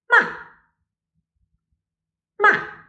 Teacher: Finally, the fourth tone, it's sharp and falling.